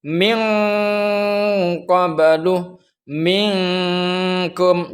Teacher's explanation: karena makhrajnya qaf dan kaf itu berjauhan dengan makhrajnya nun. Suara yang dihasilkan daripada ikhfa ab'ad ini berbunyi seperti ng ngeng.